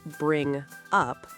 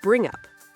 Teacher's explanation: The G and U merge together. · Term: Link the sounds